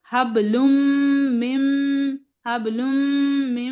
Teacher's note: सिर्फ नून की आवाज को यहां निकालना नहीं है और सिर्फ आपको क्या करना है गुना करना है दोनों जगह दोनों मीम पर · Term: गुन्ना